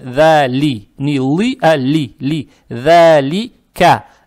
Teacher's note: Далее стоит буква «лам» с касрой. «Лам» читается мягко, то есть «да ли».